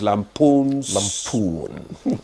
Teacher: It's lampoon. The stress is on the second syllable.